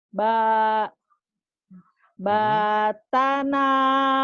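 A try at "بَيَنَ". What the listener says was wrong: titiknya di bawah. Bayana. Panjang apa pendek ya?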